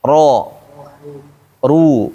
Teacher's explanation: Ketika berharakat fathah dan dhammah dibaca tebal.